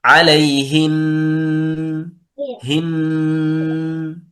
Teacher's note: تغن النون والميم المشددتان غنة من المرتبة الأولى وصلا ووقفا · إذا وقفنا على كلمة عليهن، طيب نقف عليها بالغنة الكاملة